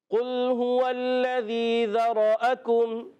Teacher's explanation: کاف کو باریک رکھنا ہے، قل پہلے والا قاف موٹا، ذرأکم کا کاف باریک